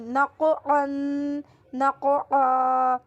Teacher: نون قاف زبر نق عین دو زبر عن نقعن. قاف پہ کلکلہ کرنا ہے اور عین کی آواز نکالیں